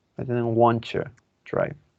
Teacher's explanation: Want to could be want to with a schwa or wanna